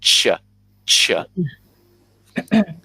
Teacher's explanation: It's going to stop the air from going through, and it makes a more harsh sound when we get a ch, ch sound. And my tongue is touching the top of the roof of my mouth just a little bit.